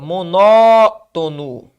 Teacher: Monótono. Ó, tá na antepenúltima sílaba.